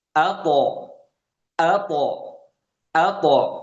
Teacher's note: ketika sukun dia punya sifat qalqalah, maka kita pantulkan, dan bunyi dari huruf to ini lebih ke o dibandingkan ke e untuk qalqalahnya.